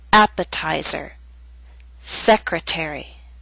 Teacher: secretary are longer words they have both primary and secondary stress primary stress is at the beginning of these words but the T still falls on a stressed syllable it's secondary stress a little weaker but still stressed that's why